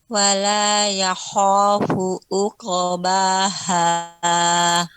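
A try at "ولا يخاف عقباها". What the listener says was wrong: ya, ainnya lebih ditampakkan ummu. Wala yakhafu ya. Wala yakhafu uqbaha.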